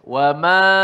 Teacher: Wama alif selepas mim itu jadi nipislah sebab mim tu nipis.